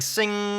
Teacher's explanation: All of the air and the resonance is coming out of your nose. Those notes are just hitching a ride on that air.